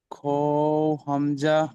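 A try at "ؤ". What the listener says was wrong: খও নয়, ও ও ইয়া হামজা।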